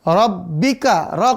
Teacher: Sifatnya tipis, napas ditahan dan memantul. Rabbika, ra kelompok kelima, ujung lidah, langit-langit belakang